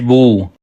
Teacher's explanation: الٹا پیش کو کڑی حرکت کہتے ہیں. الٹا پیش کو ایک الف کے برابر کھینچ کر پڑھتے ہیں